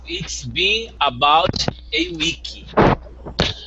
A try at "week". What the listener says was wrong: Okay, and remember, in English we don't pronounce the E at the end. So when we say week, it sounds like week. there's no E at the end.